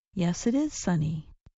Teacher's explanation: When Americans answer a yes or no question with yes, we sometimes say the words with no break. The sounds blend together.